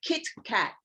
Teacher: you can have that full syllable so we have kit kat you have the vowel closed out by the consonant the consonant closes it out and then the vowel sound is short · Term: closed syllable